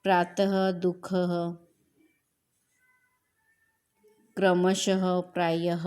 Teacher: विसर्ग का उच्चारण ह की तरह होता है